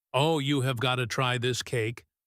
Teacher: And if someone says very casually and enthusiastically, "Oh, you have got to try this cake," the gotta, which is a relaxed pronunciation of have got to, is not serious at all.